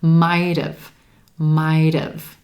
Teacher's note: that final T sound is linking over in front of the contracted have and becoming a flap T. It sounds like a quick D.